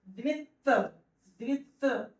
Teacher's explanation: ఈ ద్విత్వాక్షరానికి ముందు ముందున్న అక్షరం గురువు ఎందుకని అంటే ద్విత్ ద్విత్ అంటున్నాం త్వ సౌండ్ వి మీద పడుతుంది అందుకని దీనికి దీర్ఘం లేకపోయినా ఇది గురువు